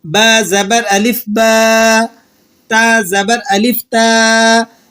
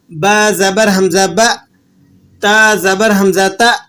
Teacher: الف کی آواز نرم ہوتی ہے اور منہ کے اندر پھیل جاتی ہے۔ جیسے دیکھیے گا با زبر الف با، تا زبر الف تا، جبکہ اس کے مقابلے میں حمزہ کی آواز سخت ہوتی ہے اور ادائیگی میں سینے پر بوجھ پڑتا ہے اور مخرج میں آواز بند ہو جاتی ہے۔ · حمزہ کی آواز سخت ہوتی ہے اور ادائیگی میں سینے پر بوجھ پڑتا ہے اور مخرج میں آواز بند ہو جاتی ہے۔ جیسے دیکھ با زبر حمزہ با، تا زبر حمزہ تا، تو یہاں پر آپ کو حمزہ کی آواز سختی سے اور مخرج میں بند ہوتی ہوئی محسوس ہوگی۔